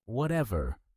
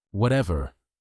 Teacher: Notice the flat, dismissive voice. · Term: Rachel tone